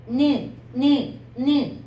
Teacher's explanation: 니은 같은 경우는 혀 끝 소리여가지고 이와 이 사이라고 보면 돼.